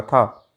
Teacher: हिंदी की स्पर्श अघोष महाप्राण दंत ध्वनि है